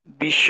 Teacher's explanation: বটা উচ্চারণ হবে না, কিন্তু তালবস্যটা দুইবার হবে, এই যে যার সাথে যুক্ত সেটা দ্বিত্ব হবে।